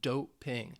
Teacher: two syllables that stress is on the first syllable